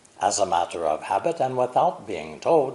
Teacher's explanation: the important content words are matter and habit the other words or syllables are unstressed